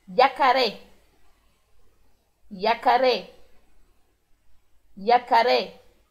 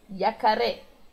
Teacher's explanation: Como tem somente um R, o R vibra menos e por menos tempo.